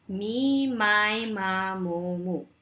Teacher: And this one, this sound is created as the soft palate lowers and allows air to escape through the nose